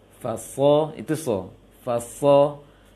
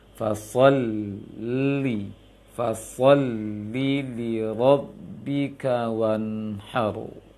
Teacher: Fasolli, maka yang tebal adalah shadnya, fa tidak, lam tidak, lam tasydid, masuk ke tasydid lam juga tidak. Maka ketika setelah so masuk ke lam bertasydid, jangan ditebalkan lisannya ketika mengucapkannya.